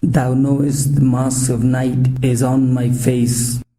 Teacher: the line consists of five groups of two syllables and with the poetic stress is put on the second syllable the sound is basically the dum da dum duh dum duh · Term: iambic pentameter